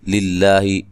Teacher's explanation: لفظ اللہ کو باریک پڑھنا ہے، اس سے پہلے حرف پر زیر ہے